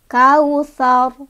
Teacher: Di sini ro-nya memiliki hukum bacaan tafkhim. Ya, tafkhim itu artinya tebal. Sebabnya karena ada ro yang disukunkan ya.